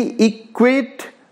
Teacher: ई unstressed syllable and क्वेट stressed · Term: आयम्बिक वर्ड